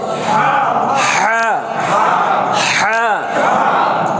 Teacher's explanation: হা হলকের মধ্যখানে চাপ দিতে হবে